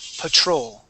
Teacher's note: the accent goes at the end of the word